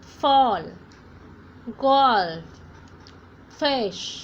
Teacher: ऊपर वाले दांत और नीचे वाले होठ को आप मिलाइए और एयर को बाहर कीजिए.